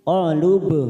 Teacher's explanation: Faqalu masuk pada huruf ba sukun. Qalub, qalqala sugro, karena mati di tengah kalimat kita pantulkan